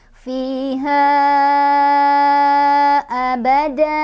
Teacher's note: Fiha, ha ini ada mad jaiz munfasil karena ada mad tabi'i bertemu hamzah dalam beda kalimat.